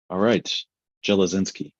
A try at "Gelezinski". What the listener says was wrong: It's a hard G, but yeah. Gelezinski.